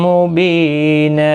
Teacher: اور وقف کی صورت میں یہاں پر بھی وقف بالابدال ہوگا، تنوین کو بدل کر ایک زبر کے ساتھ وقف کریں گے، ایک الف کی مقدار کے برابر کھینچ کر وقف کریں گے